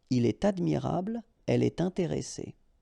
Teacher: you should make the liaison, and in that case, it's with T